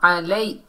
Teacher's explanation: عین کو حلق کے درمیان سے ادا کرنا ہے